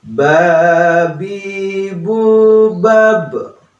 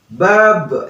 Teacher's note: karena ba itu merupakan qalqalah, jadi harus dipantulkan, ada sisanya ya.